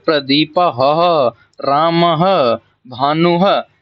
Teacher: आने वाले दो बिंदुओं को क्या बोलते हैं विसर्ग कहते हैं विसर्ग का उच्चारण आधे ह की तरह